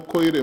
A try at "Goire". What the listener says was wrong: Goire Moses is Goire, not Koire. Goire Moses.